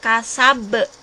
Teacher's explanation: Nah, ini kubro, kasab. Tulisannya kasaba, tapi kita bacanya kasab.